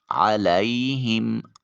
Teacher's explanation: علیہم، عین کو وسط حلق سے نکالیں، یا ساکن اور اس سے پہلے والے حرف لام کے اوپر زبر ہے یا لین ہوگا، نرمی سے ادا کریں گے، علی نہیں کریں گے۔